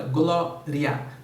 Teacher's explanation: ela é paroxítona a sílaba tônica é a penúltima